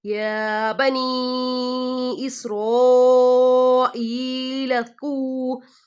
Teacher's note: لام کو آگے زال سے ملائیں گے · واؤ ساکن سے پہلے پیش آ رہی ہے، واؤ مدہ کریں گے